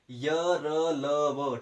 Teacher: जिन वर्णों का उच्चारण करते समय हवा फेफड़ों से निकलकर मुंह के किसी भाग को स्पर्श करते हुए नहीं निकलती, उसको बोलते हैं अंतस्था व्यंजन